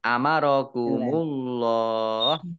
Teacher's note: Allahnya dibaca tebal karena harokat di depannya dhomah